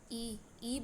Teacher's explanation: तालव से ई बोले जाते हैं